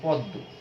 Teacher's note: তো এই সমীভবন, যেমন তুমি ধরো একটা শব্দ যদি বলো যে পদ্ম, দয় ম দিয়ে কিন্তু ছিল, এখানে যদি আমরা এরকম দয় দ দিই তাহলে এটি কি হলো, ম এর পরিবর্তে একটা দ চলে আসলো, তখন এখানে এই আমরা দেখি যে সমীভবন ঘটলো। এইভাবে এই পরের বর্ণটি পরিবর্তিত হয়েছে এখানে।